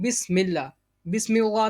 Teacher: تعالیٰ کے نام سے پہلے میم کے نیچے زیر ہے، تو بسم اللہ میں اللہ تعالیٰ کے نام کو باریک پڑھیں گے